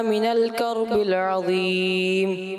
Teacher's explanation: من الکربل یہاں پر آپ نے تھوڑا کلکلا کر دیا جو کہ نہیں کرنا چاہیے تھا